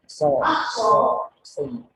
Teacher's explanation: Angin itu keluar melalui celah yang sempit antara ujung lidah dan dua gigi seri atas dan bawah. Nah, ini menyebabkan menghasilkan suara yang khas. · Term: sod